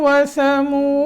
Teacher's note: फिरऔन व समूद, व समूद वाव अदा करते वक्त जब पेश पढ़ेंगे आगे वाव साकिन है तो होंठ गोल हो जाएंगे